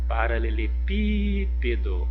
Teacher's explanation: o pi é a sílaba mais forte dessa palavra